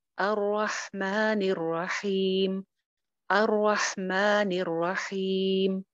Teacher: ٹھیک ہے, کوئی ایکسٹرا لمبا نہیں کرنا. را زبر کے ساتھ ہے, موٹی ہو جائے گی. را پہ شد ہے, را 2 مرتبہ پڑی جائے گی.